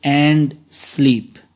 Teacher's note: And is unstressed, sleep is stressed.